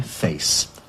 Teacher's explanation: Now that monophthong, face, which you still get in Scotland and places, gave way to a diphthong A, face.